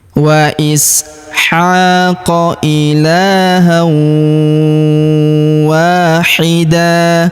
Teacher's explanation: Huruf wa kita panjangkan 2 harokat karena terdapat alif di depannya.